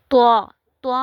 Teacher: زبان کی جو نوک ہے وہ ثنایا علیہ کی جڑ سے جب ٹکراتی ہے تو وہاں سے طا ادا ہوتا ہے، لیکن اس کو ہم نے موٹا کر کے پڑھنا ہے. طا، منہ کو بھر کے، یعنی کہ تھوڑا سا موٹا کر کے اس کو پڑھنا ہے تاکہ تا اور طا میں فرق ہو سکے. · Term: حروف مستعلیہ